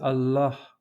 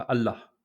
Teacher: Allah est terminé par un A long. C'est un son qui correspond en arabe à la lettre Aleph, qui est la première lettre de l'alphabet, qui a la forme d'une barre verticale.